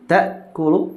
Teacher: maka ta'kulu tidak bisa dialirkan hamzahnya itu, ya, ketika sukun